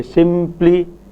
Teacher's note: When you say simply, the lips come together for m, they are already there for m, so when it comes to the articulation of p, that there is no coming together. Thus, only the hold stage for p is there and the release stage, but the contact stage is not there because it was there for the previous stages.